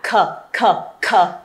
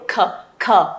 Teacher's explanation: âm này nó sẽ phát ra từ cuống họng của mình. Nên là các bạn để một cái ngón tay vào đây xem là nó có bật ra từ đây không, là mình biết ngay thôi.